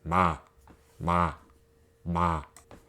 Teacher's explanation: it is the sound you make when you close your lips, which sound like an M sound. So with ah, it pronounces as ma, ma, ma. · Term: mium